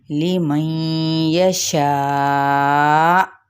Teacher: لمن یشاء، اب یہاں پہ ادغام مع الغنہ کا قاعدہ ہے، اور یہ دیکھیں یہ مد متصل ہے، یعنی ایک ہی کلمے کے اندر موجود ہے، تو ہم اسے 4 حرکت لمبا کر کے کیا کریں گے، 2 الف کے برابر، اور اس کو حمزہ پہ جھٹکا دے کر ادا کریں گے